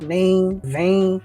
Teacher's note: A gente acaba falando o som do M no lugar do som do N.